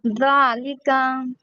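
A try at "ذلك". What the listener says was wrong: نہیں، ذالک، ذال کو نرم کریں،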